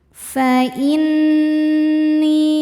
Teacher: Qul tarabbasu fa inni, nun tasydidnya dihukumi gunnah musyaddadah karena nun bertasydid. Cara bacanya berdengung, tahan dengungannya kurang lebih 2 harokat. Fa inni, ni hukumnya mad tabi'i zahiri karena ada ya sukun sebelumnya kasrah.